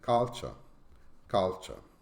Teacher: and the third word culture is also a true syllable word with the stress on the first syllable and with a weak second syllable